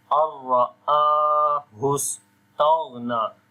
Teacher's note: And ra we read in heavy sound with fatha sign on it. Hamza we long due to a standing fatha on it.